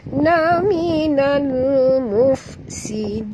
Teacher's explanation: Minal alif lam qamariyah, bunyikan lam yang mati dengan jelas.